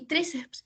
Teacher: podemos darnos cuenta que la entonación más fuerte está en la sílaba tri